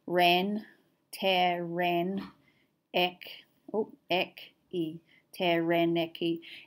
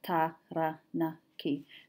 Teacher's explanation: even the A sound changes in English. Whereas very user-friendly in Māori, the A sound stays the same. Taranaki. So you just need to remember to split the sound after a syllable.